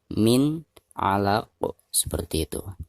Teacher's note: maka itu harus dikolkolahkan ya, atau harus dipantulkan dengan suara pantulan yang tebal ya, karena huruf qaf ini merupakan salah satu daripada huruf qalqalah dan dihukumi qalqalah kubro karena posisinya ada di ujung ayat ya.